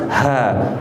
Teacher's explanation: Kemudian ha ini hames, ada anginnya yang keluar.